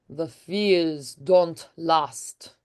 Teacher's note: And you're going to hold out the e longer.